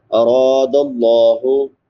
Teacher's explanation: रा के बाद अलिफ मद्दा है, अलिफ से पहले जबर है, इसको एक अलिफ के बराबर लंबा करेंगे